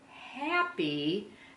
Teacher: that Y is taking on the long e sound